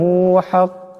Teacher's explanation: এখানে বড় কাফ আছে, আওয়াজটা গলা থেকে আনতে হবে।